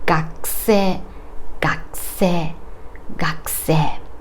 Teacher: Devoiced, gakusei, gakusei, and voiced 学生 学生 When I say this with a voiced u, my mouth is the shape of u 学生学生学生 But when I say this with devoiced u, my mouth doesn't move that much